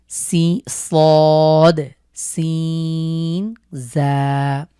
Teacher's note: এই ৩টি হরফ উচ্চারণে আমরা জানি জিভের আগা নিচের দাঁতের সাথে আগার সাথে লেগে উচ্চারিত হবে।